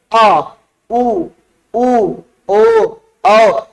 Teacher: आपने बोला तो जीवा के पिछले भाग से उच्चारण हो रहा है, आ उ ओ औ। इस तरह से आप देखेंगे तो आपको खुद ही महसूस होगा कि जीवा के किस भाग से इन स्वरों का उच्चारण हो रहा है। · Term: पश्च स्वर